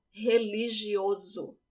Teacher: when you have one S between two vowels, it sounds like a Z.